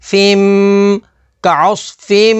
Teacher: فا میم دو زیر فیم کا عص فیم میم کے اوپر تشدید ہے تو تشدید والے حرف کو 2 دفعہ پڑھیں گے اور میم مشدد میں غنہ کریں گے